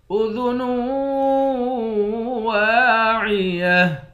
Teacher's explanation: نون کے بعد واو ہے، یہاں بھی ادغام ہوگا، اس کو بھی ادغام کر کے یعنی غنہ کر کے پڑھیں گے۔ واو کے بعد الف ہے، الف حروف مدہ ہے، ایک الف کے مقدار کھینچیں گے۔